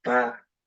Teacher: So pa becomes ba. And this is now what we call the breathy voiced consonant ba, for example, in isiZulu